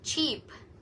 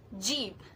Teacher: Ch is voiceless while J is voiced, and they are same in manner and place of articulation, which is post-alveolar affricates. So it is sound using tip of the tongue and post-alveolar, the location behind the alveolar ridge, and the sound starts by holding the air like a small explosion and then slowly releases it with a hissing sounds.